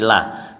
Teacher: Jadi kalau kasrah mesti lah, jangan di loh ya.